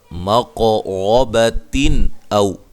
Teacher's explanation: ہے، اور گولتا کو ہائے ساکنہ میں تبدیل کر دینا ہے، ملانے کی صورت میں یہاں نون تنوین کا اظہار ہوگا